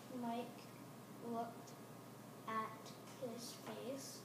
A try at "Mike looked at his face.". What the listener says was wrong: There's a period, but your voice went up a little bit. And at a period, your voice comes down. Mike looked at his face.